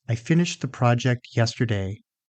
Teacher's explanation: the stressed words are finished, project, and yesterday. Everything else becomes shorter and softer.